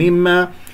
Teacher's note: كسر الميم الأولى والميم الثاني مشدد الغنة أكمل ما تكون